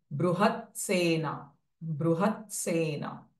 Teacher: त एंड स coming together बृहत सेना बृहत सेना त एंड स भाषा रूपा बृहत सेना